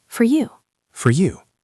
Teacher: We usually don't say for, we say fur. Fur. It sounds like the fur on a cat.